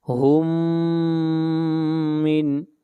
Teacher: میم ساکن کے بعد میم ہے، ادغام ہوگا